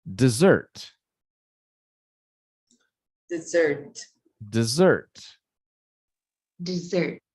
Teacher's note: you can see the stressed syllable is the second syllable